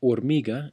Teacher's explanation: H is a unique letter in Spanish because it makes no sound whatsoever. It is totally silent.